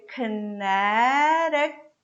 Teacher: this O is going to be very brief